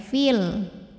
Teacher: Ya Sukun maka Kalau berhenti dibacanya panjang dua harakat Fi tapi jika wasal madnya ini gugur f-nya dibaca pendek